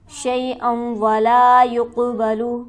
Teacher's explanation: شیئا ولا یقبل، لام پر ہمارے پاس حرف مدہ موجود ہے، اسے ہم کھینچیں گے 1 الف کے برابر۔ یقبل کے کاف پر حرف قلقلہ ہے تو یہاں پر ہم اس طرح سے پڑھیں گے کہ آواز اچھلتی ہوئی معلوم ہو